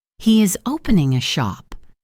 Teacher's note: Is he opening a shop? Notice how it goes down at the end of a statement. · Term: intonation